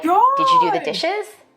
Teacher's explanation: In a study, I found that African American speakers may be more likely to ask a yes-no question with a level tone or a falling tone. For white speakers, we expect a rising tone in questions like these.